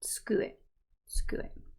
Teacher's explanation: That u sound that's in the middle usually gets dropped